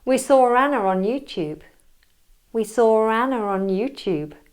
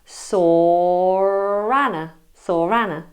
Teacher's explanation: the intrusive R's come between saw and Anna, and between Anna and on. · the word saw ends in a vowel sound, the long or vowel. And therefore you have or going into a of Anna.